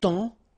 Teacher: it's only the nasal here that you will hear, temps, okay, because the P is not pronounced